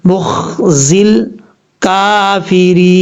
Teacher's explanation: اور زا کے بعد جو ہے یا کے بعد لام ہے، اور یا اور الف کو چھوڑ دیں گے، زا کو ڈائریکٹ لام کے ساتھ کنیکٹ کریں گے. مخزل کافرین، اس طریقے سے پڑھا جائے گا.